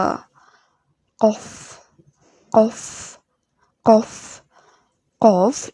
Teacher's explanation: কফ, কফ, কফ, কফ জিহ্বার গোড়া হতে মোটা ভাবে বলতে হবে।